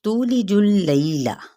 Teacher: لئی پہ یا لین کا قاعدہ، لام کی حرکت کو لمبا نہیں کریں گے